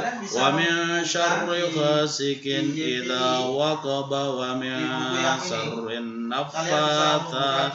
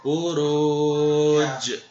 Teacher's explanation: Kalau diwakafkan saja dia dibaca qalqalah. Pantulannya kuat. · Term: qalqalah kubra